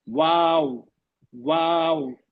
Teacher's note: पहले होंठ गोल होंगे, फिर स्माइलिंग फेस होगा, होंठ और आपस में फैलेंगे, फिर जाकर फिर गोल हो जाएंगे, क्योंकि वाव साकिन है।